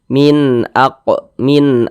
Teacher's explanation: karena dia izhar maka dibaca jelas tidak berdengung ya tidak digunahkan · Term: izhar halqi